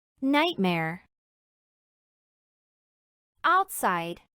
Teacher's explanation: es pronunciado como si se tratase de un ate fuerte pero sin aspiración es decir anulando el soplo de aire final